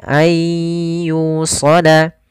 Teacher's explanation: yusala di sini ada mad tabi'i, dhammah bertemu dengan waw